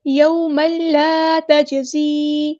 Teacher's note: میم کی جو دو زبر ہے اس کو ہم نے لام کے ساتھ مکس اپ کر دینا ، ادغام ہوگا، ادغام کامل، ادغام بلا غنہ، یوم لا تجزی،